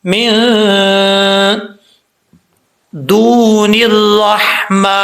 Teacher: اس نون کو آگے جو ہے اس را کے ساتھ ملائیں گے